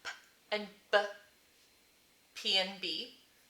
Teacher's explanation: So our plosives, we have P and B, P and B, made bilabially with our two lips